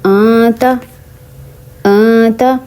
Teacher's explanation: جب میں نے آتا کہا تو کہتے ہوئے میری جو زبان تھی وہ ہوا میں رہی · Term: اخفا کرنا